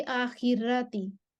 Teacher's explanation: रॉ के पहले जेर आ रही है, इस वजह से इसको मैंने बारीकी पढ़ना है। वो रॉ को तरकीब करके पढ़ लेते हैं, बारीक पढ़ते हैं।